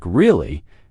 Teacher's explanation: when you ask a question like really, your voice goes up slightly at the end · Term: rising